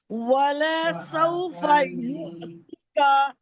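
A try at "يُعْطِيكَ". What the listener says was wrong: ٹیکا نہیں ہے نا، تو علی زبر تو، تو واپس تو یا زیر. تری تھوڑا موٹا کریں. پھر ٹیکا.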